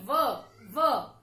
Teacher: व, उच्चारण में देखेंगे व, ये है दंतोष्ठ्य व्यंजन। व, जो हमारे होठ है दांतों का स्पर्श करते हैं व का उच्चारण करते समय